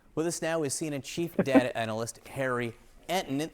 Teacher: that guy's got kind of like a weird vocal fry that he does at the end of his sentences